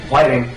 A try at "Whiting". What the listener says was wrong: Whiting. You're putting a lot of emphasis on the H.